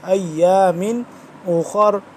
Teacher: خوا موٹا را موٹا